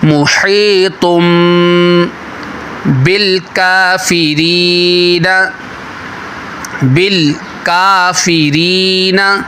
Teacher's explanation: نون ساکن یا تنوین کے بعد حرف ورڈ با آ جائے تو وہاں پر جو ہے اقلاب ہوتا ہے چھوٹی میم ہے دیکھیں اسے بدل کر یہاں پر اخفا کریں